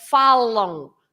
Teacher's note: the M is always to make the vowel nasal. So we don't pronounce that M as M, but falam. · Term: the nasal